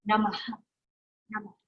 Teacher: So you've got a ha as a consonant, but you will also have the ma, which is like called the visarga, like Om Namah Shivaya, has that aspiration to it